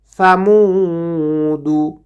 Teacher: সাটাকে জিব্বার আগার সামনের ওপরের 2 দাঁতের আগার সঙ্গে লাগাইয়ে উচ্চারণ করতে হবে